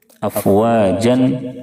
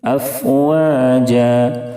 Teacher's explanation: افواجا افواجا. 2 زبر کی تنوین پر جب بھی وقف کرنا ہو یعنی رکنا ہو تو 1 زبر کے ساتھ الف پڑھا جاتا ہے